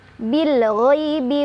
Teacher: Ghai ada harf lin karena ada ya sukun, sebelumnya ada fathah di ghain. Cara bacanya dilunakan